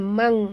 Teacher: Okay. Mangka, nun mati bertemu kaf, masukkan bunyi nun ke dalam kaf, disertai dengung, dua harakat